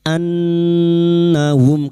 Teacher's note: Nun yang bertasdid gunna musyaddada kita dengungan selama 3 harakat. Annahum karena kita wakaf di sini.